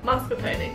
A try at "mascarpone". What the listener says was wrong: Mascarpone. Mascarpone. You add an R. Mascarpone.